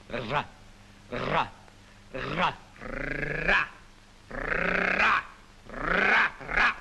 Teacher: en portant le bout de la langue jusqu'au haut du palais, de sorte qu'étant frôlée par l'air qui sort avec force, elle lui cède et revient toujours au même endroit, faisant une manière de tremblement.